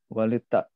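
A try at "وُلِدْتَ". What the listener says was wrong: wulid. Nah, bukan walid tapi wulid. ingat naibul majhul. Wulidta.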